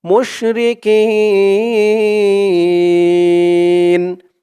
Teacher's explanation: আলিফ টানেই ছিল জের পরে ইয়াসাকিন এক আলিফ টানে ছিল কিন্তু এই এক আলিফ টানের পরের অক্ষরে অকফ হওয়ার কারণে এক আলিফ টানটা তিন আলিফ টান হয়ে গেছে